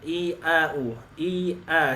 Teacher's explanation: Menurunkan rahang bawah. Dari segi praktek, fathah lebih turun daripada kasroh.